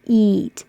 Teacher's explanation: eat is very high the highest position your tongue ever is for a vowel and it's very tense eat and then it it comes down not the middle but